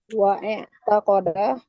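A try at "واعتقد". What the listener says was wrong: Jangan dibaca hamzanya Om.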